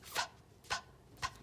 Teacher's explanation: you're putting your top teeth on your bottom lip, and you're putting some breath with it